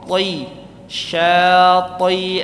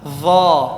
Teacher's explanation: Isti'la dan itbaq. Jadi dia tebal, sangat tebal ya.